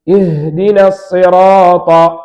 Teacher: மின் அக்ஸல் ஹல்க, தொண்டையின் கடைசி பகுதியிலிருந்து ஹா உண்டாகும்.